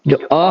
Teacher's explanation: अकार का जो उच्चारण है, जो अ हम बोलते हैं, इसका उच्चारण हमारे कंठ देश से होता है